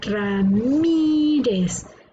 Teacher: la sílaba tónica está en la penúltima por lo tanto es una palabra grave